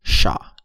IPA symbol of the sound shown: ʃ